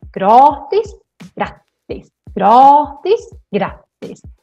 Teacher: And here the A is very short because we have two consonants coming after.